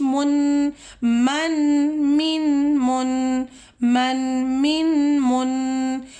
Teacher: آگے ہم جا رہے ہیں، میم 2 زیر من، میم 2 زیر من، میم 2 پیش من، من، من، من، من، من، من۔ میں آواز کو اپنے ناک کے اندر لے کے جا رہی ہوں